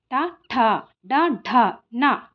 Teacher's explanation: మనం శిరస్సు నుంచి పుట్టిన అక్షరాలే మూర్ధన్యాలు